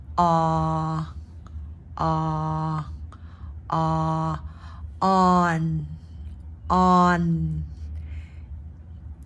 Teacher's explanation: the a a is in the back of the throat